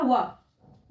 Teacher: वा का उच्चारण स्थान दंत और ओष्ठ, ओठ और दांत से बोला जाता है, इसलिए वा का उच्चारण स्थान हो गया दंतोष्ठ।